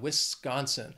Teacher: this state has three syllables and the stress is on that second syllable